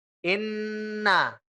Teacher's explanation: Gunnah itu ini ya, keluarnya lewat rongga hidung dan suaranya itu tipis.